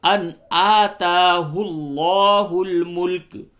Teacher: حاج حج ابراہیم ابراہیم فی ربہ ان آتاہ اللہ الملک، ان یہاں پہ اظہار ہوگا، نون ساکن کے بعد حروف حلقی حمزہ آیا ہے، اظہار ہوگا